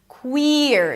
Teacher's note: Make sure you don't bring the tongue up too soon because then it's going to sound like were. Queer. So give some space for the high E to be pronounced.